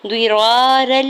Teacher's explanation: الف سے پہلے زبر ہے را کے اوپر تو الف مدہ ہو رہا ہے، دو حرکت کھینچ کے ادا کریں گے